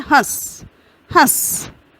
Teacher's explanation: पीछे उसका अर्थ होता है क्योंकि थोड़ा सा अंतर है, लेकिन वो जब हम बोलते हैं तो वो साथ ही प्रतीत होता है। हंस, हंस, स्वर जो है ह में, उसी के साथ हम नासिका का प्रयोग कर रहे हैं। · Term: अनुनासिक